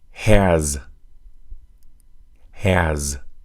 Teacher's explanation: the verb has is also a voiced sound that s in that word sounds like a z